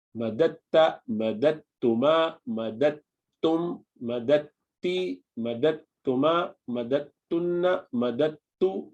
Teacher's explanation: but with tajweed you pronounce madatta straight onto ta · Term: idgham